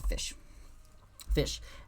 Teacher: But in Old English, we had palatalization here. After the S, the C becomes sh, so it's fish.